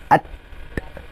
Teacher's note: hujung lidah bertemu dengan gigi atas, titik gigi kapuk atas di sebelah dalam. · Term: huruf ta